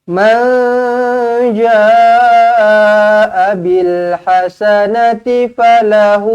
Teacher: Nun kosong bertemu dengan Jim di sini kita dengungkan dua harakat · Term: Ikfa hakiki